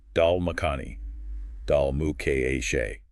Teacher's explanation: notice the smooth, almost continuous flow between mo and ka.